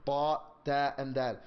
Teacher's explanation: The ta, the dal, and the ta, they come from the tip of the tongue, from the top side.